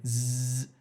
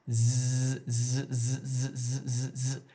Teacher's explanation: If you're doing the z sound correctly, if you put your hand on your throat, you can feel it vibrating. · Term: voiced